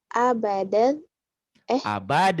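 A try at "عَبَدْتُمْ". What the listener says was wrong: Abad, tum. Huruf matinya jangan dibaca. Abatum gitu. Ingat rumusnya ya, kamu catat nanti. Setiap huruf mati bertemu huruf bertasdid, huruf matinya jangan dibaca.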